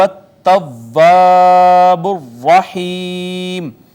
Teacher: را چونکہ مفتوح ہے اور مشدد بھی ہے اس وجہ سے اس کو بھی پر کر کے پڑھیں گے